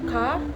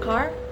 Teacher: Australian English is considered nonrotic, meaning that the sound R is not pronounced at the end of syllable or before a consonant